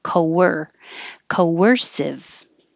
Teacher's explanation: when you round your lips for co and then you come back for er it will make a w